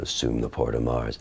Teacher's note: it drops my voice I used my bottom register a lot more